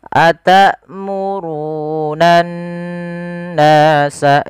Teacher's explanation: Kemudian berfal annas di situ ada lafal bacaan ghunah yang di mana harakat nun yang dia berharakat tasydid. Cara membacanya adalah kita menahan suara nnya sepanjang dua harakat.